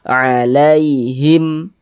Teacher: Sebelum ya sukun ada harokat fathah, maka huruf ya sukunnya adalah huruf lin. Kita baca lunak.